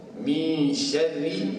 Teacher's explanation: Min syarri, nipiskan pasal dia syaddah kasrah.